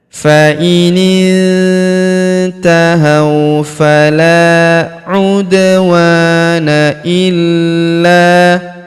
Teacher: Huruf wa kita panjangkan dua harakat karena terdapat alif di depannya. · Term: tasydid